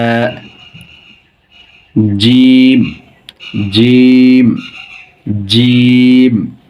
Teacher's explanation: উচ্চারণের স্থান জিহ্বার মধ্যখান উপরে তালুর সাথে লাগিয়ে শক্ত করে বের হবে, এটা শক্ত হরফ, মোটা হরফ।